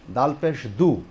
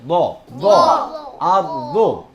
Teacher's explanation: তাহলে ওয়াল জুল জিলাতিল আর দো, দোয়াদের মাখরাজ হলো জিহ্বার গোড়ার কিনারা, জিহ্বার গোড়ার কিনারা উপরের মাড়ির দাঁতের গোড়ার সাথে টাচ করে, উপরের মাড়ির দাঁতের গোড়ার সাথে লাগিয়ে দোয়াত উচ্চারণ করতে হয়।